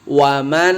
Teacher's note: gunnah ditahan tiga ketukan atau dua harokat